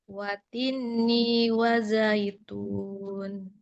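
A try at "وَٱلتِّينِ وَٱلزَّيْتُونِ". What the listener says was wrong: Perhatikan tasdid. Yang huruf bertasdid itu yang kita tahan. Wati, wazza. Nah, huruf yang bertasdid, pertahanannya pada huruf yang bertasdid.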